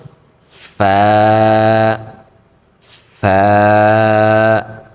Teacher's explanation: উপরের যে আমাদের দাঁতগুলো রয়েছে সেগুলোকে আমরা আমাদের নিচের যে ঠোঁট রয়েছে সেই ঠোঁটের পেটে লাগিয়ে দিব, অর্থাৎ ঠোঁটের যে ভিজা অংশটা রয়েছে সেই ভিজা অংশে আমরা লাগিয়ে উচ্চারণটা করব।